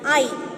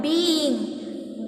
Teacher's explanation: Whereas in the case of the word being, there are two syllables, so you can only consider the two vowels that are coming together only as sequence of two vowels